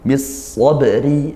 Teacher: ba sukun dibaca memantul ya, dia qalqalah sughra, dipantulkan